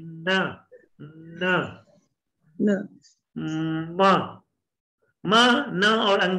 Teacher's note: म, न और अंग, ये तीनों नेजल आवाजें नाक से निकलती हैं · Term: नेजल्स